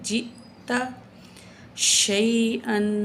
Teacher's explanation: حمزہ ساکن ہے تو جھٹکا دیں گے